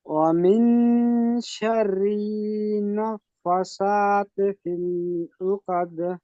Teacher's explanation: নুনের উপরে তাসদিদ, অজীব গুন্না, মানে এখানে গুন্না করা ওয়াজিব, গুন্না করতেই হবে। তারপরে দেখেন ফায়ের উপরে খাড়া জাবার, খাড়া জাবারকে এক আলিফ টান দিতে হবে কারণ আলিফ মাদ্দার সমান।